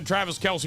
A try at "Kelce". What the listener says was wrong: Travis Kelce. It's Kels, not Kelsey. It's Kels.